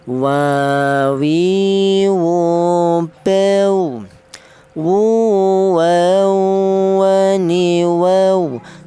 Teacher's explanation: Huruf wawu keluarnya huruf berasal dari kedua bibir yang renggang